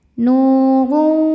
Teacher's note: Minallahi nu mad tabi'i dhahiri karena ada waw sukun didahului baris dhammah, maka huruf nun panjang 2 harokat